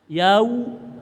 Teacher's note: ada wawu mati sebelumnya fathah namanya madlin. Usahakan suara u.